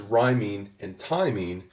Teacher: the strong stress for the or the rhyme stress happens at the next-to-last syllable and not on the last syllable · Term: feminine rhymes